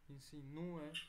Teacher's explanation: Entonces, hiato, porque hay separación. Insinúe, hay acento en la U, entonces hay también un corte ahí.